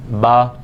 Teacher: با جب پڑھیں گے تو ہمارے دونوں ہونٹوں کا جو خشک حصہ ہوتا ہے وہ آپس میں ملتا ہے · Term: حروف شفویہ